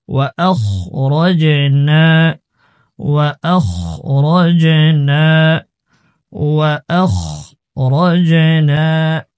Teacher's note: উচ্চারণ মোটা হবে খ বলবো খা যেন না আসে